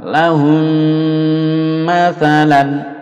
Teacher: mem bertemu mem dilebur dari satu dengung lalu dipanjangkan